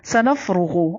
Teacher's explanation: را کو پر پڑھنا ہے، غین کو بھی پر پڑھنا ہے